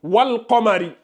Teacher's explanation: lunaire, on a le soukoun sur le lam et on prononce bien le soukoun